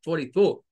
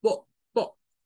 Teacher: no lo dice como el sonido de la 4, de la R, sino que lo corta, 44. Que es más con el sonido de la O glotal, po, po, muy parecido al estilo británico, de hecho.